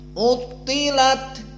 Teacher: Maka dia mufakhamah. Maka tafkhimnya kuat dikarenakan tasdid.